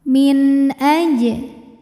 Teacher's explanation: Sebab ada nun sukun yang menghadapi huruf halqi atau huruf tenggorokan, yaitu huruf hamzah. Maka nun sukun kita bunyikan dengan jelas. Jadi bunyinya N ya, dan tidak perlu ditahan. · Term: izhar halqi